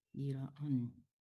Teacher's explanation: Jangan dijelaskan tapi didengungkan. Di ang disamarkan ke kaf.